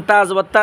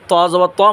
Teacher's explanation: তা জবর তা চিকন আওয়াজ ত জবর ত মোটা আওয়াজ